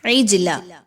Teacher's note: جیم کو ہلا کر پڑھیں گے، جیم حروف قلقلہ میں سے ہے اور اس پر جزم کی علامت بھی موجود ہے